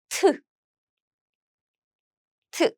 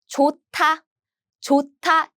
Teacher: 디귿 with 드 sound with a lot of air.